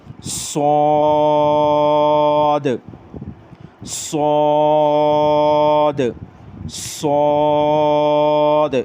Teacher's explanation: इसमें आपको ये सीटी की आवाज़ भी आ रही है और सौद को मैंने मोटा किया, और आखिर में जो द की आवाज़ आती है ना, सौद, द द, ये दाल के ऊपर आवाज़ उछल रही है, इसको कलकला, सिफ्ते कलकला कहते हैं।